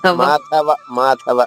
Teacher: మూడో చరణంలో మాధవ కూడా థ మహాప్రాణం అమ్మ. అది కొంచెం మాధవ మాధవ అంతే.